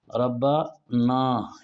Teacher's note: مثال کے طور پر ایک آدمی، اصل لفظ یہ ہے ربا نا، ربنا یہ اصل لفظ ہے نا، تو اس کو اگر ہم ربنا پڑھیں گے تو یہ اس طرح بن جائے گا ربنا، بیچ میں یہ اردو والا نون غنہ فالتو آ جاتا ہے